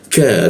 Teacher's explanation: huruf ka di siku tenggorokan lidahnya kita turunkan. Ka, ada hembusan udara di ketika membaca ka